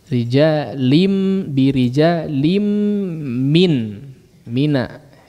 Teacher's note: diidghamkan mimnya masuk kepada atau tanwinnya masuk kepada mim ya, kemudian disertai dengan gunnah yang panjang